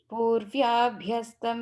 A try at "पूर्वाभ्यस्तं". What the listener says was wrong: third line, there's no ya. Purvabhyastam not purvya. There's no vya there. Ya there. No. Purvabhyastam.